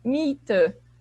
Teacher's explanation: IE se lê como se fosse um I longo